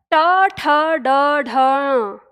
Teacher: क्योंकि हम मूर्धा से उत्पन्न कर रहे हैं उसका उच्चारण